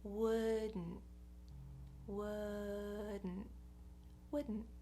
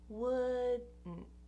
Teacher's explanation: I take the tongue for the D, would, and I just keep it there to pronounce the N. Would. So goes up for the D and just stays there for the N.